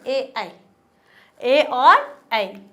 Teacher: हमारी जीवा का पिछला वाला भाग ऊपर हल्का सा टच हो रहा है, लेकिन जो ध्वनि निष्कासित हो रही है, ध्वनि निकल रही है, वो हमारे कंठ से निकल रही है। ठीक है, तो ये क्या हो गया हमारे कंठ तालु, दोनों ही इसके उच्चारण स्थान माने जाएंगे।